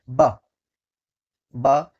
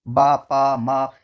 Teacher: next question है आपका, कि इनमें से बा की ध्वनि कौन सी है, किसकी, ब, देखो कल बताया था जिसमें आपके होठ भिड़े, देखो होठ भिड़ रहे ना इसमें, ब, ब भिड़ रहे ना, दोनों होठ टच होते हैं तो उसको क्या बोलते हैं प्यारे बच्चे, ओष्ठ्य कहते हैं